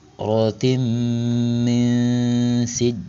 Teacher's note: Maka cara bacanya dibaca lebur disertai dengan dengungan. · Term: idgam bigunah